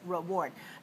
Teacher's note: Notice that the first syllable is weak. We don't say re, we say rit.